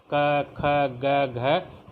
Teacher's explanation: कंठ का होता है बच्चों गला, ये सीधे गले से निकलते हैं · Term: कंठ्य